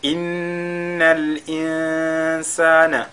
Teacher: Au niveau déjà de Nun qui est Mushaddada, on fait Al-Ghunna.